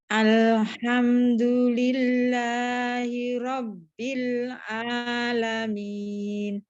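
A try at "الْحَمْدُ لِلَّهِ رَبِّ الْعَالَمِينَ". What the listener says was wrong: di hi-nya itu tebal ya, Bu.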